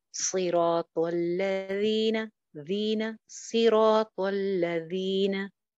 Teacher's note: soft letter है, नरम हर्फ है, बगैर सीटी के, ऊपर वाले दो दांतों के किनारे पे जुबान लगा के